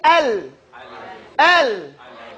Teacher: Lam is pronounced on the edge of the tongue. When it goes up, inner up, it hides on the gums.